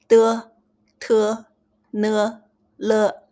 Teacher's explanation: tip of your tongue touches upper teeth, the roof or the root of the upper teeth